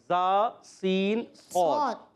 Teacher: تو سیٹی کے ساتھ اچھا اس کا مخرج بھی بتا دیتا ہوں. زبان کی بالکل باریک نوک اوپر اور نیچے والے دانتوں کے کناروں سے جب لگتی ہے تو ادا ہوتا ہے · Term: حروف صفیریہ